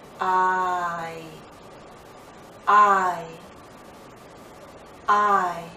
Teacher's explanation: into e with our lips fully spread but we come close start in a more open position ah and then glide into e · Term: diphthong